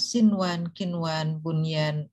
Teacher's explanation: nun sukun bertemu dengan ya untuk lafadz bunyan itu dibaca dengan izhar. Ya, padahal kalau menurut kaidah umum kan itu harusnya dibaca dengan idgham ma'al gunnah. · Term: izhar kilmi